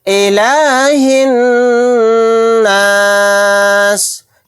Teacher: ہا کو نون کے اندر ملا دیں گے، یہ الف اور لام نہیں پڑھے جائیں